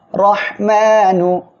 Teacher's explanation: র অক্ষরের উপরে জবর আসছে মোটা করে পড়বেন